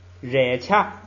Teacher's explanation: 本来这个热是升降调，热，但是前不降，所以它就变成升 ，就是热掐，哎，光升不降了。后边是孔僧，仰包，这个是个新词儿，仰包是轻的，就是轻重的轻，扬就是轻，